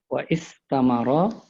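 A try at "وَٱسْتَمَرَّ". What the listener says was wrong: Kalau kayak gini hamzanya hamzah wasal. Jadi hilang dia. Wasamarra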